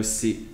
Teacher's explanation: the verb to go, si, low tone